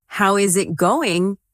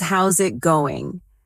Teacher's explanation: The is disappears and the final G in going often softens. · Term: connected speech